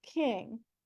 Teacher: an example of an aspirated K in English would be king So an initial K in English followed by a vowel is aspirated like King